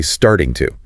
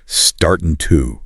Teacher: the ing loses all of its crispness and the hard T becomes severely softened. The entire phrase degrades into startin' to.